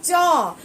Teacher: जैसे हम कहेंगे च तो तालु से हमारा जिह्वा मिलता है, इसलिए इसे कहा जाता है स्पर्श व्यंजन।